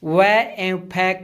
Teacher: दंतोष् में ऊपर के दांत और निचला होठ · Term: दंत प्लस ओष्ठ